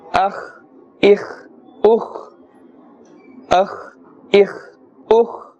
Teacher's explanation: the kha is pronounced with a full mouth and the scraping sound